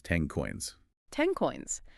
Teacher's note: So the back of the tongue moves back early, and instead of finishing 10 with the tip of the tongue, you produce an NG sound in the back of your throat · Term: assimilation